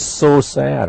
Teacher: We have a Z and a S. They are similar. It's just a difference of voicing. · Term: blended